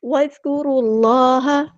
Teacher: دال باریک نرمی سے ادا کرنا ہے، کاف بھی باریک نرمی سے ادا کرنا ہے، را ہمارا ہیوی لیٹر پر ادا کریں گے، را کو ہم نے لام کے ساتھ ملا دینا ہے، حمزۃ الوصل وہاں ڈراپ ہو جائے گا، اللہ کا جو لام ہے وہ ہیوی ادا کرنا ہے، موٹا پڑھنا ہے